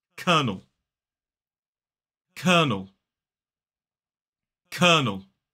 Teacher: And then that second syllable is ul. Again, finishing in that dark L as an isolated word. · 2 syllables, the stress falls on the first. So it's K. And then that second syllable is ul.